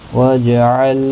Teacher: جیم ساکن پر قلقلہ ہوگا